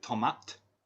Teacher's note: sometimes they'll drop it and say tomat with no o at the end